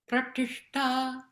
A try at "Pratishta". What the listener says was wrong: Don't go back with the tongue too early. Pratishta.